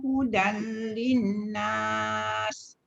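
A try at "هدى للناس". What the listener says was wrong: Dekat nun sabdu tu yang tak cukup dengung. Hudan linnas.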